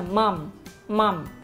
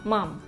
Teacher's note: cái âm m là mình ngậm môi ở cuối câu, mầm. Còn đối với âm n là mình phải đưa lên tới mũi, đẩy lên, đẩy lên. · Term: âm môi